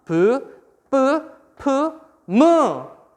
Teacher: 공기의 흐름이 쉽게 얘기해서 입술에서 방해를 받는다. 이렇게 생각하면 되겠죠. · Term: 입술 소리